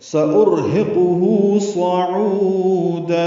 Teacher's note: ہا کو اقصی حلق سے ادا کریں گے، جلدی اور معروف پڑھیں گے